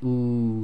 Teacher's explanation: And the last one is the Dhamma Wow, which is the oo sound, and the air again is passing all the way from the throat through the middle of the mouth out through the front of the mouth. The oo sound is made with the rounding of the lips, but at the same time the back of your tongue will raise.